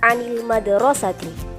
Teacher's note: Kedua, kesalahan huruf a menjadi a pada kata anil madrasati. Titik artikulasi dari huruf a adalah wastul halqi, namun biasa dikenal dengan faringal. Huruf a memiliki 4 sifat.